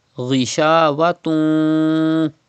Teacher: Keep the sound in your nose up to 2 harkat. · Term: gunna